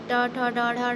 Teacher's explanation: ट, ठ, ड, ढ, ड, मूर्धन्य हो जाती है।